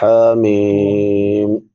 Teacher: ہا چھوٹی ہا ہے، حلق کے درمیان سے ادا ہوتی ہے